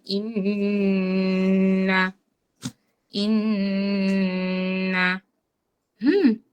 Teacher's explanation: গুন্নার মাখরাজ স্থানটা হচ্ছে নাকের বাঁশি